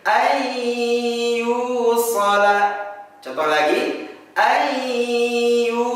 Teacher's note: Cara bacanya sama, ialah leburkan bunyi nun sukun atau tanwin masuk kepada ya bertasydid. Contoh seperti lafaz ada an dan yusola, kita baca menjadi ayyusola.